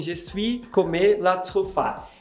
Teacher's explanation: Ele está oxitonando todas as palavras. Ele está fazendo tudo virar uma oxítona.